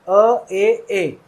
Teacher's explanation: मेरा मुंह लगभग आधा खुला हुआ है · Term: अर्धविवृत